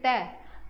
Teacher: जीभ जो है ऊपर दांतों को टच करती है, तो दंत से बोला जाएगा। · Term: दंत्य व्यंजन